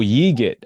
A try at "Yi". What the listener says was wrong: but the G is silent.